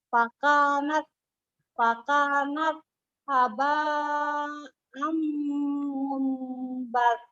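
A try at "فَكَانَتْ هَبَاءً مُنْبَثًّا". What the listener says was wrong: Ya, mumbasa, basa. Ya, tidak ada jeda ya. Kalau dia dihentikan kayak basa, seperti yang sukunnya kayak huruf ta, bukan sa ya. Kan dia tinggal harokat fathah aja, kan udah langsung di huruf sa, basa, tinggal diterusin fathahnya aja.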